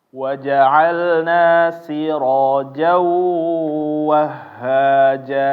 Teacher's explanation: Ro-nya jangan lupa ya, tebal tapi jangan monyongin bibir, jangan siro, ya jangan, tapi siro ya, jangan dimonyongin.